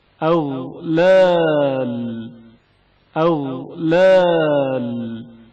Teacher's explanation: غین کی آواز جریان رکھتی ہے اور اچانک منقطع نہیں ہوتی